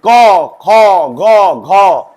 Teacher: क वर्ग का कंठ से